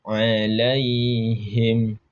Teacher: Ketika kita mengucapkan huruf ain, itu berasal dari tengah-tengah tenggorokan kita.